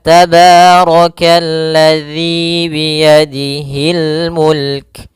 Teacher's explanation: pada lafal dzi di sini ada mad thabi'i yaitu kasrah bertemu ya panjangnya dua harakat